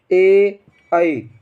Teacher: हमारा जो होता है जीभ कहां तालू से टच करती है और आवाज निकालते कहां से कंठ से आवाज निकालते हैं · आवाज़ निकालते हैं कंठ से, लेकिन हमारी जीभ कहाँ से? तालू से टच होती है। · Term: कंठ तालब, कंठ तालव्य